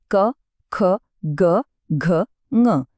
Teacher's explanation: ધ્યાન આપજો, આ બધાનો અવાજ ક્યાંથી આવે છે? ગળાના એકદમ પાછળના ભાગમાંથી, એટલે કે કંઠમાંથી. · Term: ક વર્ગ